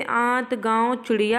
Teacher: अनुनासिक के उच्चारण में नाक से बहुत कम सांस निकलती है और मुख से अधिक